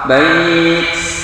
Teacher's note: Artinya hamis itu berdesis keluar hawa. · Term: huruf hams